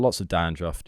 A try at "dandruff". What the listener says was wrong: Is it not druff? You said druffed twice.